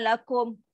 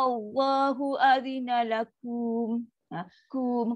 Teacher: Kalau dia bukan ma'arid disukun, tak boleh baca dengan panjang. Dia kena baca dengan satu harakat dan tepat.